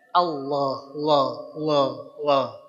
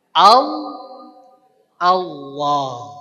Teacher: Jadi bukan dengan cara di kanan karena secara tulisan latin juga a l a h allah tulisannya tapi kita bacanya tebal tafkhim. Bagaimana cara menebalkannya? dengan si pangkal lidah kita yang diangkat